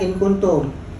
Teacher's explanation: kafnya berada di pangkal lidah sebelum lak-lakan